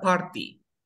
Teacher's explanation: Y ahora dice, cuando tengo una R antes de la T, pero después tenga un sonido de vocal. Cuando tengo una R antes de la T, pero después tengo un sonido de vocal, la T no suena.